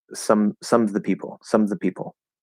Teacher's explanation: we're not going to enunciate that v sound and it's just gonna drop